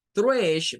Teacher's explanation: el sonido ae es un sonido corto para la vocal a es la unión prácticamente de la a y la e pero se dice de una manera muy rápida o sea no